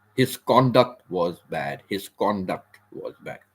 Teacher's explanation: we stress we stress on the first syllable